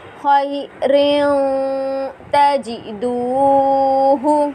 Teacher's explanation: تنوین کے بعد حروف اخفا کا تا آ رہا ہے، اس لیے یہاں پر اخفا کر کر ادا کریں گے